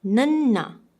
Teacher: nanna which comes from the front of your palate, from the front of your mouth